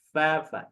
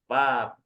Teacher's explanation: Dan dari bagian dalam bibir bawah bertemu dengan ujung gigi seri atas keluarlah huruf fa.